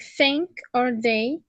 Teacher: Dental, tongue tip and inner of upper teeth